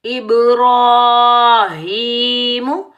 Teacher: با ساکن پر ہم کلکلا کریں گے جب ہم کلکلا کریں گے ڈبل ساؤنڈ آئے گا ٹکراؤ پیدا ہوگا